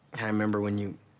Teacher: as sometimes happens in fast native speech, Peeta dropped the first syllable of remember, member. He also dropped the d from and linked it to I.